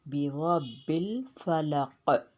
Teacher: قاف پہ قلقلہ، قلقلہ متوسطہ کیونکہ آخری میں ہے وہ قاف